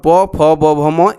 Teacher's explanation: प, फ, ब, भ, म, ये भी जो है आपके ओठ से ही बोले जाते हैं, यानी इनका उच्चारण स्थान ओष्ठ है।